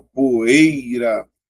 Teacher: o E é mais forte, ó, poeira. Então, a letra I, ó, é uma semivogal. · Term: ditongo decrescente oral